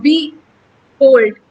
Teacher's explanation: अब यहाँ पे जब हम बोलते हैं तो बी होल्ड, बी जो है वो अनस्ट्रेस्ड है